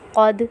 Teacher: دال پہ قلقلہ ہوگا کیونکہ حرف قلقلہ میں سے حرف دال ہے، اور دال سے پہلے والے حرف کے اوپر زبر ہے۔